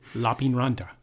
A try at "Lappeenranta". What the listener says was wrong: That's not how you say it. Lappeenranta. In Finnish, the emphasis is on the first syllable. Yes.